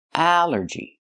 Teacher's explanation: It's three syllables. Allergy. The stress is only first syllable.